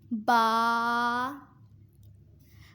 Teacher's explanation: با دونوں ہونٹوں کے تر حصے سے ادا ہوتا ہے۔